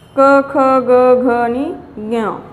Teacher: हे सगळे वर्ण उच्चार जे होतात ते कशातून? कंठ्य, गळ्यातून होतात. गळ्यातून उच्चार करतो आपण.